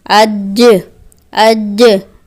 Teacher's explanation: पहले शिद्दत और फिर कलकला किया तो ये हुर्फ अच्छे तरीके से मुकम्मल अदा हो गया।